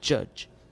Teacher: Voiced affricate occurs at the beginning and end of judge.